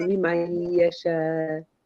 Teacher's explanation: remember, we don't pronounce the noon